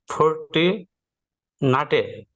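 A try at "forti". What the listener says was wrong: ফর্তি, আবার ওই ইংলিশে যাচ্ছেন কেন, ফর্তি, আবার বলে নাথে, ফর্তি নাতে না, এটা তর উচ্চারণ, ত, তুমি তুমি এরকম হবে, নাতে, হ্যাঁ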